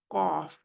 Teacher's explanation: In qaf, it has istila but not ittibaq. It has istila and infitah. Qaf. You can see the placement of tongue and the you can say its distance between tongue and the upper part of the mouth.